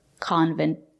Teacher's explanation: You can say convent or convent. Use the stop T at the end of the word. Convent. Put your tongue up and stop the air.